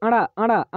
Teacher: अड़ा दोस्तों हमारा जो बोला जाता है ये मूर्धा से बोला जाता है